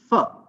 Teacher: So f is a labiodental sound. Why? Because the lower lip and the upper set of teeth, fine, both are involved.